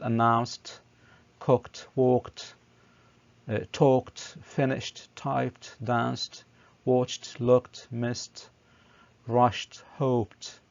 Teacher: pay attention to the pronunciation of the ed as t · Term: t sound